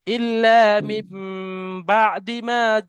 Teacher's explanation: নুন সাকিনের পরে বা এসছে, তাহলে নুনকে মিমের সাথে পরিবর্তন করে একালিপ পরিমাণ গণনা করে পড়তে হবে, একে ইকলা বলা হয়।